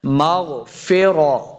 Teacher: غین موٹا کرنا ہے، غین کو موٹا کر کے پڑھنا ہے. غین حروف مستعلیہ سے ہے.